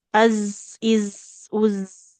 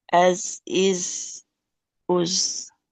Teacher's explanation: Nah, jadi kalau huruf zai ini dia nggak boleh ada aliran nafasnya.